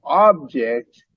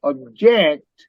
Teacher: when you say object, the stress is on the first syllable, ob. But if you say object, you stress the second syllable, object.